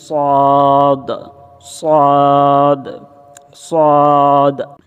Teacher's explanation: জিহব্বার তালু বা জিহব্বা কোথায় লাগবে এটাও আজকে আমরা জানবো সদ সদ হচ্ছে আপনার জিহব্বার আগা একদম দাঁতের মাড়ির সাথে লেগে যাবে